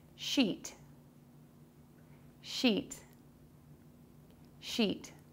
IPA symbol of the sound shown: ʃit